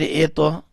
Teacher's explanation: تو کے اوپر کلکلا کیا